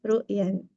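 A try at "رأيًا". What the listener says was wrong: Ro'yan. Kalau ru'yan nanti ru'ya, mimpi. Ro'yan ya, ro'yan pendapat.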